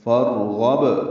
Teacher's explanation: را پر پڑھیں گے کیونکہ اس سے پہلے زبر آئی ہے اور حمزہ عارضی بھی ہے ، جب حمزہ عارضی ہو تو را پر پڑھی جاتی ہے، · فارغب غین پر پڑھیں گے اور با ساکن پہ وقفاً قلقلہ کریں گے